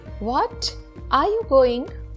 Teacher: And if you pronounce what with a rising tone, for example, what are you going? It means you did not expect what you just heard.